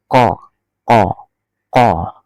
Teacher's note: Baik, di surat Al-Falaq ini diawali dengan huruf qaf, qul, ya, qul. Qul itu sumber suaranya dari pangkal tenggorokan, ko bukan k ya, tapi ko, ko.